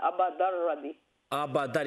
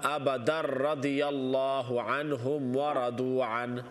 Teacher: तो यहाँ पर इदगाम बगैर गुन्ना है